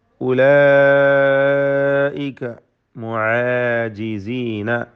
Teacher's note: അവിടെ ഐന് അലിഫ് ഇസ്തിഫാലിൻ്റെ അക്ഷരങ്ങളാണ്, എല്ലാം ശ്രദ്ധിച്ചോതുക. തർക്കീഖാണ് ഐന്, അതിൻ്റെ മഖ്റജിൽ നിന്ന് ഉച്ചരിക്കണം. ഉലൈക മദ് മുത്തസിൽ വാജിബ് നൽകി 4-5 ഹറക്കത്തിൻ്റെ അളവിൽ അലിഫിനെ ദീർഘിപ്പിക്കൽ നിർബന്ധമാണ്.